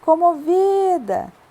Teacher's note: o vi é minha sílaba mais forte a penúltima Por isso a minha palavra é paroxítona então eu escrevo convida